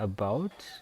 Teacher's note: Nah, kata about, strongnya itu ada di silaba kedua